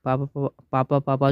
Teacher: प वर्ण का उच्चारण स्थान है, ये जो है होठ से होता है, प होठ से होता है।